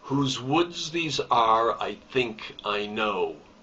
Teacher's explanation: each foot starts with an unstressed syllable and ends with a stressed syllable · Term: iambic